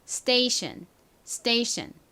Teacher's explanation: 발음하실 때 S 뒤에 TPK가 나오면 된소리로 발음 난다